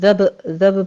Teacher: با کے اوپر قلقلہ کریں گے، آگے زال میں آپ نے سیٹی کی آواز نہیں لانی ہے